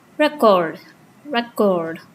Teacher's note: stress fall on the second syllable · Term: second syllable stress